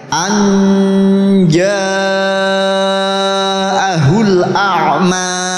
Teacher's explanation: Anja jim ya. Jim itu tengah lidah dengan tengah langit ya.